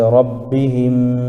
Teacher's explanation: اس کو ناک میں آواز کو روک کر پڑھنا چاہیے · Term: شفوی